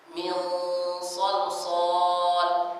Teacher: Setelah nun huruf shad, huruf yang tebal, maka gunnahnya jadi tebal.